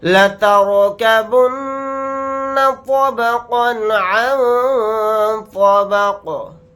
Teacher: نون ساکن کے بعد تو آ رہا ہے تو اس میں اخفا کا قاعدہ ہو رہا ہے, تو نون کی آواز کو ناک میں چھپا کر اخفا کے ساتھ پڑھیں گے · قاف کو ساکن بنا کر پڑھیں گے حالت وقف میں. قاف ساکن ہوگا تو یہاں پر قلقلہ بھی ہوگا